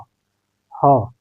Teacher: अब ह का उच्चारण कर रहे हैं तो हवा कंठ से सीधे बाहर निकल जा रही है, तो यह हो जाएगा हमारे कंठ में आ जाएगा।